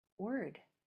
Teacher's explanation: You don't hear the O, you hear the R. Those are called liquid consonants.